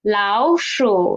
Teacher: We will change the first 老 into second tone.